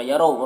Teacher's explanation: यरो रॉ को पुर पढ़ेंगे, वाव लीने से नरम आवाज़ के साथ जल्द पढ़ेंगे।